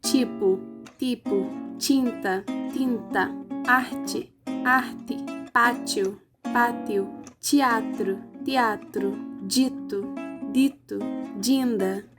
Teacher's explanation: Os exemplos mostram as oclusivas dentais desvozeada e vozeada sofrendo palatalização antes da vogal alta anterior e da semivogal anterior , sejam elas tônicas ou átonas, nasais ou não. E é